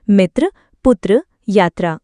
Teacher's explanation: यह हिंदी वर्णमाला के चार मुख्य संयुक्त व्यंजनों में से एक है। इसका उच्चारण करते समय त और र की मिलीजुली ध्वनि सुनाई देती है।